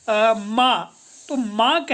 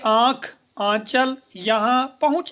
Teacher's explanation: वायु मुख्य द्वार से तो बाहर निकल ही रही यह साथ-साथ हमारे नासा द्वार से भी बाहर निकल रही है · उच्चारण होने पर जो वायु है वायु मुख के साथ-साथ नाक से प्रवाहित हो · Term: अनुनासिक